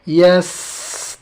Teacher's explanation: Sin tidak boleh pisah dengan huruf ta ya. Yastaqim. Tunaikan hamesnya ta.